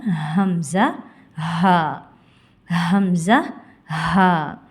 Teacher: ஹ ஹம்ஸா தொண்டையின் அடி பாகத்திலிருந்து ஒளிக்க பெறுகின்றன